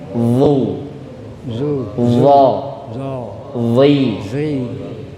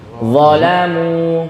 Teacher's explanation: Ujung lidah ditempelkan ke gigi seri atas. Pangkalnya naik lidahnya ini, tenggorokannya menyempit.